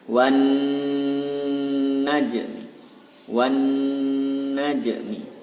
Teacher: nunnya bertasdid maka dibaca double, dibaca dengung 2 harokat